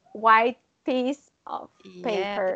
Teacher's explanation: We don't pronounce T. We just pronounce P. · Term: assimilation